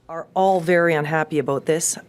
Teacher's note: The Canadian raising is when they put their tongue higher in their mouth